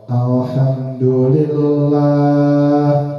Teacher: Nah, lah dibaca panjang.